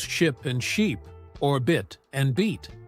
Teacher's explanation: The difference is in how long you hold the vowel sound